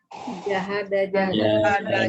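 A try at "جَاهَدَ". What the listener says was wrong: Panjangin huruf pertamanya. Tulisannya itu panjang.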